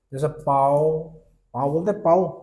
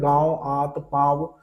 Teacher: जैसे इसके एग्जांपल अगर मैं लूंगा तो जैसे गांव, गांव में लिखूंगा तो देखो आराम से बोला जा रहा है, गांव मुंह से भी निकल रही है और नाक से भी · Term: अनुनासिक